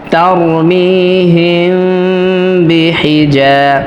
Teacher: এই মিম সাকিনে অবশ্যই গণনা করতে হবে, কেননা মিম সাকিনের পরে বা আসছে। এটা হচ্ছে ইদগামে শাফাউই বা মিম সাকিনের ইখফা।